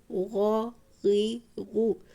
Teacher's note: غین خا گلے کے اوپر والے حصے سے ادا ہوتے ہیں